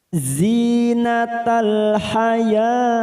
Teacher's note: zi sama kasrah bertemu ya sukun 2 harokat kita panjangkan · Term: mad tabi'i